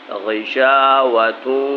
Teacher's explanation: یہ دیکھیے تنوین ہے تا کے اوپر، اور واو مشدد ہے، واو کے اوپر تشدید ہے، تو تنوین میں بھی غنہ ہوتا ہے، واو کے اوپر تشدید ہے، واو تا سے ملا کر پڑھیں گے اور ناک میں آواز پیدا کریں گے